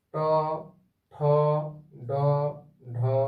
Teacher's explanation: ট বর্গের এই বর্ণগুলি উচ্চারণ করার সময় জিভ মূর্ধাকে স্পর্শ করছে। সেই জন্য এই বর্ণগুলিকে বলা হয় মূর্ধন্য বর্ণ।